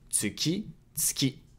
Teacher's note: The U sound in tsu can be devocalized and you can say tsuki instead of tsuki.